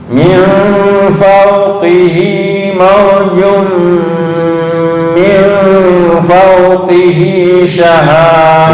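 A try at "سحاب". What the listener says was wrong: Bukan syahab, sahab. Sahab.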